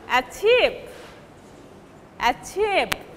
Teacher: after giving primary stress, the first syllable is unstressed.